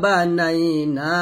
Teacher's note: এটা হলো লিনের হরফ না টেনে নরম সুরে পড়তে হবে তাহলে এখানে বলতে হবে বানানাইনা নুন আলিফ জবর না টান দিবেন